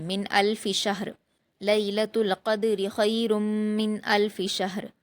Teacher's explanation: را کی جو 2 زیر کی تنوین ہے وہ وقف کرتے ہوئے جزم میں بدل جائے گی